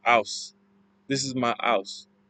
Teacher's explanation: A key feature of the Cockney accent is dropping the H that starts with words.